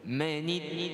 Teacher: kita tahan pada syaddah, tapi jangan ditahan dengan harkat. · kita idgham, yakni pada kalimah manid, kita masukkan dalam syaddah, tapi tiada dengung. Kemudian secara syaddah, sifatnya syiddah itu kita tekan.